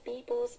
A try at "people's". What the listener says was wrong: When you say people's, you got to put S on that, pronounce it as a Z.